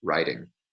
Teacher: in most varieties of North American English, the present participle form of the verbs write and ride are phonetically identical, and without context, it's difficult to distinguish them from one another. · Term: total neutralization